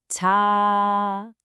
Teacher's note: The key here is that long ah sound, kind of like in the word father.